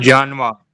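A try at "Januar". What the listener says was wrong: जे नहीं, यानुआ।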